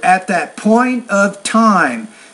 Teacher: the P and the T, you need to produce those sounds with more air, right? And that will help you with your intelligibility.